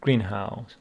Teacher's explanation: greenhouse with the stress on the first syllable